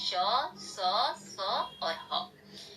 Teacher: हवा केवल घर्षण या संघर्ष बिना स्पर्श करती हुई बाहर निकलती है